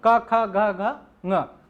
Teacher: क को बोलेंगे तो हम कंठ से बोलते हैं, क ख ग घ ङ, उनका उच्चारण स्थान बरोबर है तो इनको हम वर्ग बोलेंगे, ठीक है।